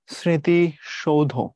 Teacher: সামনে যে মফলা আছে এটা দন্তর সাথে যুক্ত এবং তার উচ্চারণ হবে না